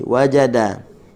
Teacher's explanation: huruf dal hujung lidah dengan langit, dengan gusi